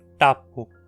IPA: ʈapu